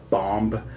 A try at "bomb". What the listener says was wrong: What did you call it? No, the B is silent. The final B is silent. It's bomb.